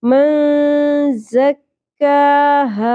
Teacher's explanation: کیونکہ نون ساکن کے بعد حروف اخفا میں سے زا آ گیا. ٹھیک ہے، زا کو شدت اور سیٹی کے ساتھ ادا کریں گے